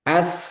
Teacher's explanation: Ujung lidah ketemu ujung gigi seri atas. Nah, jadi dua ujung bertemu. Ujung gigi seri atas dan ujung ee lidah.